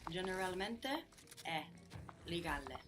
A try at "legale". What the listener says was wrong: We're still carrying over quite a strong E sound from English. Legal. No? So give me again legal. Legale.